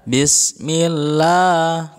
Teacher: Membaca lafaz Allah hukumnya tarqiq atau artinya tipis. Jadi lafaz Allahnya dibaca tipis, ya. Larinya ke suara la, ya, tidak lo